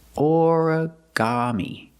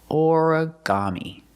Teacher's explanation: Put the stress on the first syllable and the third syllable.